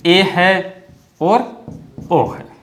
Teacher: ए ओ स्वर ऐसे हैं जिनका उच्चारण करते समय संवर्त स्वरों की तुलना में जो मुख है वो थोड़ा सा अधिक खुलता है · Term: अर्ध संवर्त